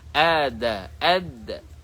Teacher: huruf dal ini keluar daripada hujung lidah bertemu dengan umbi gigi